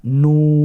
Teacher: এই হরফগুলো আপনাকে অবশ্যই 4 আলিফ টেনে পড়তে হবে। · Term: মাদ্দে লাজিম হারফি মুখাফফাফ